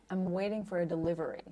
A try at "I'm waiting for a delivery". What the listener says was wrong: hahaha beautiful okay good